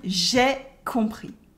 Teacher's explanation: Here you can notice that the S at the end of compris is silent and O and M make a on sound, the nasal on. And we don't like to say je and ai, it sounds ugly.